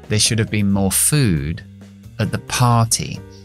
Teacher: Todas estas palabras pequeñas, las preposiciones, los demostrativos, los artículos, lo voy debilitando todo a la schwa para poder acentuar las palabras importantes.